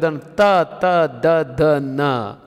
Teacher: ದಂತದ ಬುಡದಲ್ಲಿ ನಾಲಿಗೆಯನ್ನು ಬಡಿಯುವ ಮೂಲಕ ಅಕ್ಷರಗಳು ಹುಟ್ಟುತ್ತವೆ · ಹಲ್ಲಿನ ಅಂತ್ಯದಲ್ಲಿ ನಾಲಿಗೆಯನ್ನು ತಟ್ಟುವ ಮೂಲಕ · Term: ದಂತ್ಯಾಕ್ಷರಗಳು